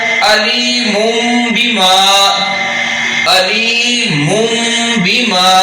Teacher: نون تنوین کو بھی ہم نے میم میں بدل دیا